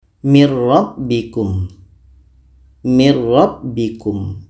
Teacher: nun mati ini kita masukkan ke ro masuknya Nun kepada ro itu secara sempurna karena murni kita baca ro saja tidak terdengar bunyi Nun lagi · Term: idgham Bila Ghunnah, idgham kamil